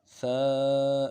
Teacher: اور جو حرف ثا ہے، لفظ ثا، اس لفظ ثا کو بھی بالکل نرمی کے ساتھ ادا کرنا ہے۔ ثا ادا کرنے کے لیے زبان کا سرا سامنے والے دانتوں کے سرے سے جب لگے گا تو ثا ادا ہوگا۔ ثا الف زبر ثا، الف مدہ کو ایک الف مدار میں کھینچیں گے۔